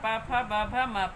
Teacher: इनके उच्चारण में हवा जो है ओठों को स्पर्श करती हुई बाहर आती है। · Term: ओष्ठ वर्ण